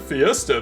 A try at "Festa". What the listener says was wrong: Festa. Not Fiesta. It's no I.